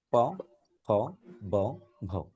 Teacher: দুই ঠোঁটের সংস্পর্শে যে বর্ণ উচ্চারিত হয় তাকে বলে উষ্ঠবর্ণ। উষ্ঠ মানে ঠোঁট।